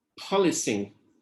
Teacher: In this case, the student was trying to say polishing. So the sh sound has just become a s sound.